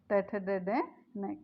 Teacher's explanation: मूर्धन्य से। यानी हमारी जिह्वा मूर्धा पर जाकर टकराती है।